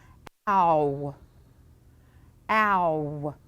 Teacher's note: It does seem a little bit like it's got something following it, doesn't it? Okay, so even though it's one sound, our mouth is going to move two places. So in my mouth, my lips are definitely moving, but my tongue is moving a little bit too.